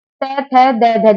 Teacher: दंत। जो हमारा तय है वो दांत से बोला जाता है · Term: दंत्य ध्वनि